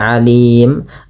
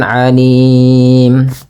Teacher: Nah, kalau di sini kan awalnya mim berharakat mun, karena kita waqaf pada lafal mim tersebut, maka mimnya berubah menjadi sukun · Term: mim sukun